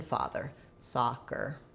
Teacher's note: the letter O says the ah vowel, not rounded · just thinking it as a nice open ah, like in father, soccer. And then I still have my tight sound, but it's just short and reduced.